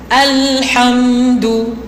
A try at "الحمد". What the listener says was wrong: Jangan ham yang tu tak nak. Jangan seret.